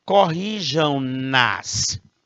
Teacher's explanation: o verbo termina em som nasal. Se termina em som nasal, eu nasalizo o pronome também.